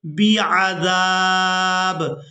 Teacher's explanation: وقف کی صورت میں با کو ساکن کر دیں گے، زال کو الف مدہ کی وجہ سے کھینچتے ہوئے اس با ساکن کے ساتھ ملائیں گے